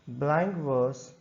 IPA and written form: ˌblæŋk ˈvɜːs (BLANK VERSE)